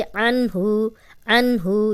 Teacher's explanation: अब देखें ये जज़म वाला नून है, यहाँ हम गुन्ना नहीं कर रहे क्योंकि आगे हरूफ हल्की आ गया है, हा है, हमज़ा हा, आइन हा, गैन खा, तो हा आ गया, इसलिए हम सीधा सीधा पढ़ेंगे अन्हु, अन्हु।